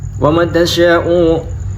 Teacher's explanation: tasya itu wajib muttasil karena berhubungan dengan hamzah ya dalam satu kalimat